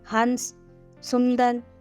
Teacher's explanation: स्वर कहते हैं ओम प्लुत स्वर का एक उदाहरण है अनुस्वार अनुस्वार का उच्चारण केवल नाक से होता है